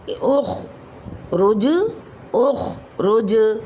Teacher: جیم ساکن حالت میں حروف قلقلہ میں سے کلمے کے آخر میں آ رہا ہے تو یہاں بھی قلقلہ کبریٰ ہوگا